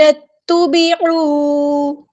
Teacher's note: نون کو ہم نے تا کے ساتھ ملا دینا، حمزۃ الوصل ہمارا ڈراپ ہو جائے گا